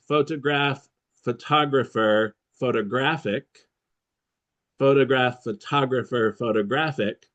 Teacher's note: photograph, the stress is on the first syllable. Photographer, the stress is in the second. Photographic in the third. And each one is a different sound.